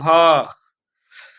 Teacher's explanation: देखिए दोस्तों, भ का उच्चारण स्थान क्या होता है? ओष्ठ होता है।